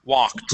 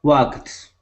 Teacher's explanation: The L is silent. We only pronounce an ah sound.